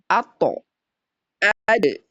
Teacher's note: Ujung lidah bertemu dengan pangkal gigi seri atas.